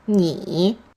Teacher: Remember the tone mark is V-shaped. It goes low and then bounces up again. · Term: third tone